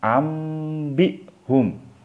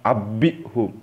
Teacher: Jadi kalau misalnya ada nun mati ketemu ba, teman-teman harus dibacanya mim mati, ya, dan disertai dengung. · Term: bacaan iqlab